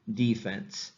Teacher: the stress is on the first syllable and therefore it is the full vowel sound the e right defense so um i think that's a great